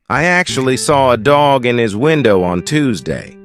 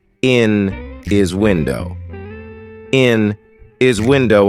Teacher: the letter H after a consonant which is a really weak sound so weak that we don't even say it sometimes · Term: linking sounds